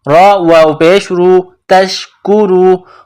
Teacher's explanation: را کے اوپر پیش ہے تو را کو موٹا کرنا ہے